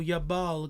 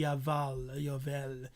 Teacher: Yes, they pronounce the B as a V. So Yabal can be Yaval, Yavel, whatever.